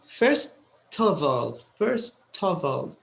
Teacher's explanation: so the t is very clear here because you have a vowel after it